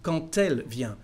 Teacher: Don't forget there is a connection between quand and elle. The letter D becomes a T for the liaison.